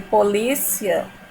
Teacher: Então, quando eu digo polícia, o I ele é pronunciado de maneira mais fraca e o A ele tem mais presença, ele é pronunciado de maneira mais forte, tá certo? É por isso que ele é um ditongo crescente, tá certo?